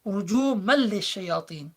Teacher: It's not rujuman lishayatin, it's rujuman lishayatin. There is no nun sound remaining. And there is no ghunna being applied also because it belongs to the 2 exceptional letters, ra and lam, which do not, in which case ghunna does not apply. · But immediately after you have a lam, which has a shadda because of this rule. And so the nun goes into lam, assimilates, becomes within the lam itself. So you do not pronounce the nun.